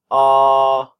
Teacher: tongue back and down and that's the lowest back vowel but the tongue goes back and down · the tongue back and down and that's the lowest back vowel